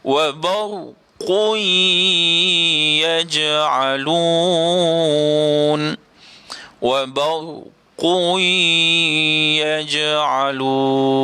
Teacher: Asalnya wa barqun. Qun, qaf dua di depan qun, tetapi dimasukkan, diidghamkan kepada ya, maka kita kena bunyi dengan wa barqui. Qui, dengung pula.